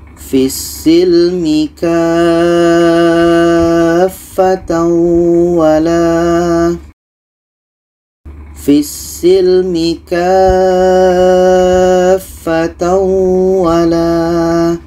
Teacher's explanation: Cara bacanya kita panjangkan ka ini 6 harakat, baru masuk ke huruf yang ada tasydid. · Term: mad lazim kilmi mutsaqqal